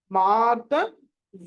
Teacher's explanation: రకారం ఉంది ర మార్ ద మార్ద ద అన్నది అల్ప ప్రాణం ఒత్తు లేదు